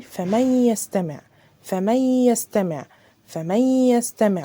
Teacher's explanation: يعني الادغام الناقص ده يعني معناه ان ذهاب الحرف وبقاء صفته وهي الغنة · بصوا النون مش موجودة بس في غنة، فمن يستمع اديتها غنة. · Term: ادغام ناقص